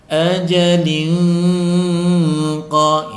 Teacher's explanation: Ajalin qa, ini disebut dengan ikhfa hakiki, tanwin bertemu dengan qaf, cara membacanya disamarkan disertai dengung. Ajalin qa, ajalin qa istilah tebal.